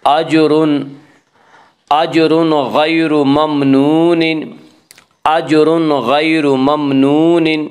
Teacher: غیر، را کو پر پڑھیں گے، اس کا قاعدہ ہے کہ را کے اوپر زبر پیش ہے تو را کو پر پڑھا جائے گا